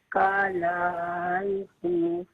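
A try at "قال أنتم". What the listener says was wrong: اچھا قال میں لام کو کھینچی مت. قال انتم.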